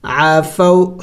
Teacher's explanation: دیکھیں نون واو ساکن ہے، اس کے پہلے زبر ہے تو اسے حروف لین کہتے ہیں، اور حروف لین کو جلد پڑھیں گے، جڑ کر لمبا نہیں کریں گے